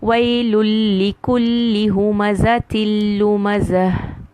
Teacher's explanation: I do not do a gunna. I just keep reciting with the sound of lam. I do not hear noon at all. I do not hear gunna at all. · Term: complete merging